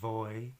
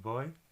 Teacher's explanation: it's kind of like a soft sound where you're putting your two lips together and doing almost like a B